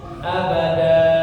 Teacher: Kalau berhenti maka dibaca jadi abadan. Tanwinnya hilang digantikan dengan mad ya. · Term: mad iwad